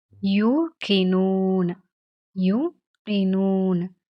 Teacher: அப்போ நார்மலா நீட்டி ஓதுறத விட இன்னும் நீளமா ஒரு அலீஃபுடைய அளவுக்கு நீட்டி ஓதணும் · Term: மத்துடைய எழுத்து